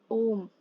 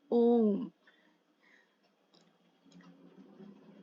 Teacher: प्लूत स्वर, जिसमें ह्रस्व स्वर से लगभग 3 गुना समय लगता है,